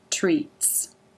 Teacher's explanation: the lips form the R shape around the closed teeth and tongue tip up to make the final T and S sound.